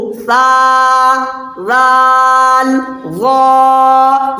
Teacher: ज़बान की नोक और सनाया उलिया का किनारा मिलकर सा राल वा अदा होता है